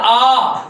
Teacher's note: फिर होता है आ। तो इसमें आ का जो मुंह फटता है उच्चारण होता है उसमें ज्यादा समय लग रहा है। नहीं ये आपका इसमें कम समय लग रहा है वो आपका ह्रस्व स्वर हो जाएगा।